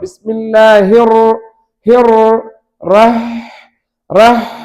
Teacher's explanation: ஹா சுக்குன் பெறும் பொழுது அந்த சத்தம் கடந்து போகிற அளவுக்கு நேரம் கொடுக்க வேண்டும். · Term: ஹர்ஃபுன் ரிஹ்வுன்